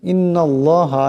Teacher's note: এখানে আল্লাহ নামের ডাইনে জবর আসছে, আল্লাহ নামকে মোটা আওয়াজে পড়তে হবে।